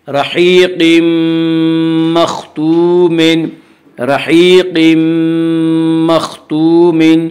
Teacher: کے 4 حرفوں میں سے میم آ رہا ہے، اس لیے تنوین کو میم سے ملا کر غنہ کے ساتھ پڑھیں گے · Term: ادغام مع الغنہ